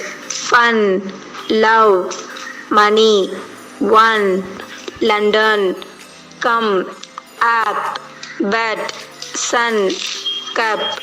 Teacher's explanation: The three-term description of this sound is open, mid, back, unrounded